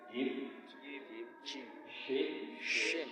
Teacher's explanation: Sumbernya sama di tengah-tengah lidah dan langit-langit.